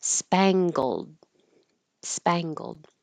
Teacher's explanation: This is interesting because we have an NG combination and we do make the spang with the tongue high in the back, but then we do bring it down g and make a hard G for gold